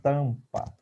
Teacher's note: Foneticamente, eu tenho T, A, que é nasal